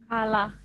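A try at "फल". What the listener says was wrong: ingat ya, yang huruf terakhir E-nya kan hilang ya, nggak dibaca ya.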